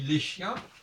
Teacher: Parce qu'on n'entend pas le S du chien, on entend le les de l'article défini pluriel.